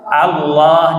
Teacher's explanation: Nah, ini yang sering kalau kita perhatikan baca lafzul jalalah tafkhim, menyebut kalimat Allah itu bukan O. Allah, jadi antara A dan O, pertengahan